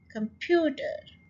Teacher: कम को बहुत आपने आराम से कह दिया, जल्दी से फ्यू के ऊपर जोर डाला और ठ इन द एंड.